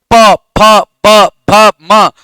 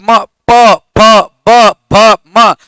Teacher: देखो ओठ सट रहा है ना, तो उच्चारण स्थान क्या हो जाएगा, ओष्ठ हो जाएगा